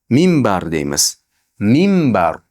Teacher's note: Mimbar xuddi ikkita mim mim bar. Ikkita mim bor deb o'qiymiz.